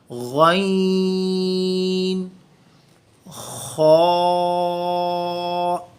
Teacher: غین اور خا دونوں کا مخرج اپر تھروٹ ہے، تھروٹ کا جو شروع والا حصہ ہے جو ہمارے منہ کے پاس ہے، دونوں کا مخرج سیم ہے، غین، خا۔